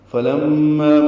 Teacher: فلما من مشدد پہ غنہ ہے، ما الف مدہ ہے، تبین له ملا دیں گے، قال اعلم.